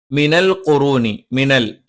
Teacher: ല നാവിന്റെ അറ്റം മേലെ മുൻപല്ലിന്റെ മോണയിലാണ്